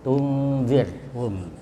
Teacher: tunzir itu ketemu zal ya, nun sukun ya. Jadi itu bisa didengung